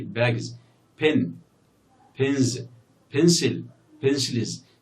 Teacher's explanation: these nouns end in voiced sounds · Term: voiced consonants